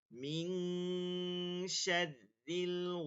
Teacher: এটা ইকফা গুন্না হবে, সামনে শিন আছে।